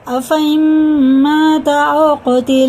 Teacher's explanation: واو ساکن سے پہلے کیا ہے؟ الف وہ زبر ہے تو یہ حرف لین ہے، اسے ہم جلدی پڑھیں گے